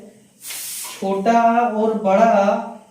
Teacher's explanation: छोटा आ और बड़ा आ, इसका उच्चारण स्थान जो होता है कंठ होता है